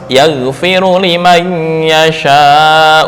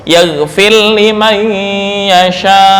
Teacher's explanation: dalam hal ini membaca idgham mutaqaribain, yaitu ra bertemu lam